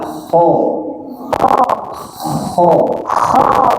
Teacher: huruf kha ini ya bunyinya memang ada ngorok tapi sedikit.